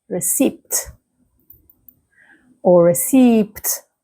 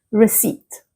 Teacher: So a lot of learners tend to pronounce the P, receipt or receipt, but the P is silent. So the correct pronunciation is receipt.